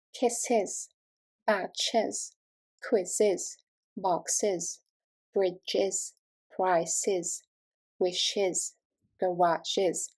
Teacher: adding an 's' creates an extra spoken syllable pronounced as /ɪz/